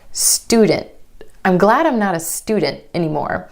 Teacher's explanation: Instead of student, student. My tongue stays up for the T sound after the N. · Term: held T